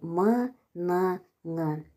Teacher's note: Енді үнді дауыссыз дыбыстар мұрын жолды, яғни м, н, ң